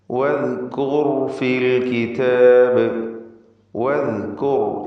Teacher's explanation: നാവിൻ്റെ അറ്റത്തിൻ്റെ മുകൾ ഭാഗവും മേലെ മുൻപല്ലിൻ്റെ അറ്റവും, ഇതാണ് ദാലിൻ്റെ മഖ്റജ്. ളഹ്റു ത്വറഫിൽ ലിസാൻ മഅ അത്റാഫി സനായൽ ഉലിയ. · ളഹ്റു ത്വറഫിൽ ലിസാൻ മഅ അത്റാഫി സനായൽ ഉലിയ. വദ് ദാലിൻ്റെ ഉച്ചാരണത്തിൽ റഖാവ വേണം, അഥവാ അയവ് വരുത്തി ലൂസാക്കി ഉച്ചരിക്കേണ്ട അക്ഷരമാണ്. വദ്കുർ റാഇൻ്റെ ഉച്ചാരണം പ്രത്യേകം ശ്രദ്ധിക്കുക, തഫ്ഖീം ചെയ്യണം.